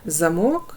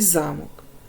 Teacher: замок Два склади перший склад ми вимовляємо з більшою силою голосу Отож у першому слові голосніше вимовляємо другий склад а в другому перший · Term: наголошений